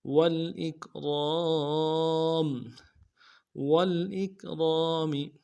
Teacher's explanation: واو کو لام کے ساتھ ملانا ہے اور حمزہ کو کاف کے ساتھ ملانا ہے، کاف کو باریک کریں گے، را کو موٹا کریں گے، را کے ساتھ الف مدہ ہے، ایک الف میں کھینچیں گے، میم کو نون سے ادا کریں گے، وقف کی صورت میں میم کو جزم کریں گے.